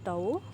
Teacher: वाओ को आपने होंठों को गोलाई करके अदा करना है। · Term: वाव लीन